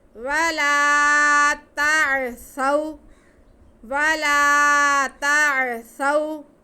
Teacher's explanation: سا پہ زبر اور واو ساکن، تو یہ واو لین ہو گئی، تو ان میں سے کسی کو کھینچنا نہیں ہے